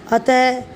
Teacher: अंग की ध्वनि को विसर्ग कहा जाता है। विसर्ग का उच्चारण ह की तरह झटके से होता है